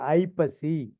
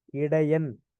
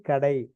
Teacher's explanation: ஐகாரக் குறுக்கம் தனக்கு இரண்டு மாத்திரை அந்த இரண்டு மாத்திரையிலிருந்து ஒன்றரை மாத்திரையாகவும் ஒரு மாத்திரையாகவும் குறைந்து ஒலிக்கக்கூடியது உதாரணத்துக்கு பார்த்தீங்க அப்படின்னா ஐப்பசி அது ஒன்றை மாத்திரை இடையன் ஒரு மாத்திரை கடை